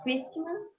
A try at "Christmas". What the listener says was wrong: Christmas. Don't have the T sound.